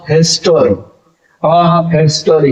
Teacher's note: the accent is on the first syllable